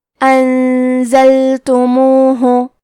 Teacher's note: کلمت انزلتموہ میں نون ساکن ہے، پھر حرف زے ہے. زے حروف الاخفاء میں سے ہے تو ہم یہ حکم کو غنہ کے ساتھ ادا کریں گے